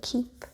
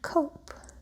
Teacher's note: the aspiration that happens at the beginning of words in keep and cope